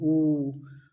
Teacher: संवृत माने यहाँ पर मुंह बिल्कुल जो है गोल हो जाएगा, बंद हो जाएगा, बिल्कुल समझो बिल्कुल छोटा सा संवृत। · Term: पश्च संवृत